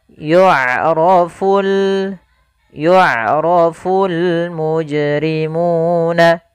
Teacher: Pada lafal bacaan yu'rafu, di sini ain memiliki sifat, yaitu sifat bainiyah, yaitu suaranya tidak terlalu dialirkan dan tidak pula terlalu ditahan